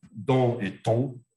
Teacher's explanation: la différence entre D et T, c'est la sonorisation, si les cordes vocales sont vives ou pas. Donc, c'est un trait qu'on appelle sonorité.